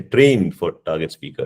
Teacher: my pitch was quite high for the first trained word, and then it went down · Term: stress